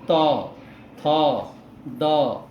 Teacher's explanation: हमारा जीभ जो है, जीभ दांतों से टकरा रहा है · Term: दंत्य वर्ण